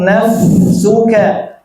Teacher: Fa ini bukan hanya napas yang mengalir, Bu. Suara juga mengalir. Nah, fa ini napas, suara mengalir dua-duanya. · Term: rokhawah